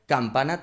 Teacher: Y la K se pone la lengua justo en el velo de paladar atrás.